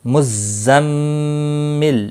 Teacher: میم مشدد پر غنہ ہوگا، ویسے بھی تشدید والے حرف کو تھوڑا سختی کے ساتھ پڑھتے ہیں تاکہ تشدید ظاہر ہو